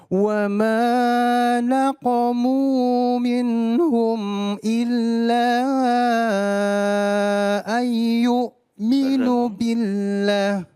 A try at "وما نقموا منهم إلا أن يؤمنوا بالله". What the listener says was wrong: Ya, ada dua di sini kesalahan tadi. Nun ketemu dengan ya. Yu'minu billah. Ya berdengung yu'minu ya.